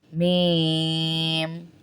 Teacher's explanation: होंठों वाला हुर्फ है, बंद होंगे होंठ फिर खोलेंगे।